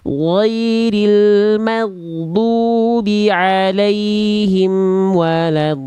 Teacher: jangan magdu, tapi ngalir suaranya. Nah, betul-betul mengalir karena sifat ghain itu rokhwah, mengalir suaranya ya.